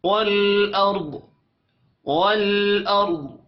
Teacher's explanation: سماوات سماوات والارض، لام ساکن پر قلقلہ نہیں کریں گے، اور را ساکن سے پہلے زبر آ رہی ہے، را کو موٹا پڑھیں گے. ضاد وقف کی صورت میں ساکن پڑھا جائے گا اور ضاد کو موٹا بھی پڑھیں گے